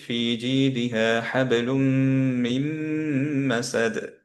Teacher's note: হুম লুনের পরে, নুনের পরে আবার নুন সুকুনের পরে মিম আসলো, হুম সেম হুম, রিজনে আমরা হচ্ছে যে এটাকে গ্রেড আউট করে দিলাম, এখানে সাদ্দা দিলাম, যেহেতু সাদ্দা দেওয়া, তা মিম মিম সাদ্দা, তার মানে হচ্ছে এখানে গুন্না থাকবে, কারণ মিমের প্রপার্টি হচ্ছে গুন্না